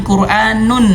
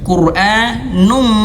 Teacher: Nunnya berharakat domahtain nun masuk ke huruf mim. Num langsung bukan quranun. · Fokus ke sini, nun tanwin ya, nunnya berharokat dhammah tain, nun masuk ke huruf mim, num langsung, bukan Qur'anun, nun bukan, tapi langsung Qur'anum dan tahan 2 harokat, num majid, seperti itu ya teman-teman.